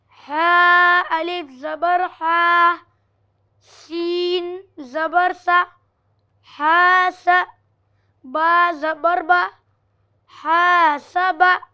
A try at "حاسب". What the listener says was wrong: حا الف زبر حا اب حا الف ملا دیتے ہو الف الگ بولو حا الف زبر